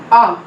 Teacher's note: centralise vowel between half open and open position and it is अनराउंडेड vowel